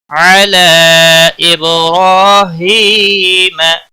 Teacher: را کے اوپر کھڑی زبر ہے، ایک الف کے برابر کھینچ کر پڑھیں گے · علی مد منفصل ہے، تین الف کے برابر کھینچ کر پڑھیں گے۔ اب با پر قلقلہ ہوگا، حروف قلقلہ میں سے ہے